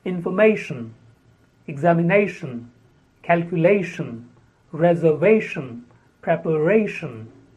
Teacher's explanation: world especially when a verb is converted in to a noun with tion the stress is on the second last syllable